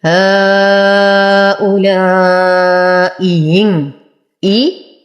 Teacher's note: الهمزة الأولى محققة، الثانية مسهلة